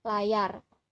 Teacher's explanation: Aproksiman yang ditemukan pada tabel fonem yaitu aproksiman palatal yang berbunyi yeh. Bunyi yeh merupakan bunyi bersuara